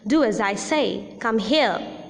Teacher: falling tone is also used in used in command